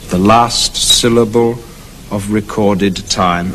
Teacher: it slows up even more ending up with a very important word time at the end of the sentence